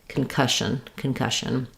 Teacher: And letters SS say the sh sound here, so I would rewrite that like cush on concussion. We may have almost no vowel for the shun part, going really quickly from the sh to the n, shun. Or we might have a shin or a shun. · So we have the stress on cush here.